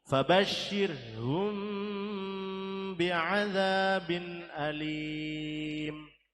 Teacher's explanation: Ikhfa syafawi karena mim sukun bertemu ba